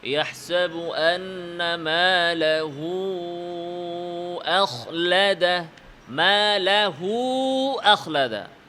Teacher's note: পরের হরফটা যদি হামজা হয়, তাহলে এটা মুনফাসিলের মতো, আল মাদ্দুল মুনফাসিলের মতো 4 অথবা 5 হারাকাত লম্বা করে পড়তে হবে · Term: মাদ্দুস সিলা কুবরা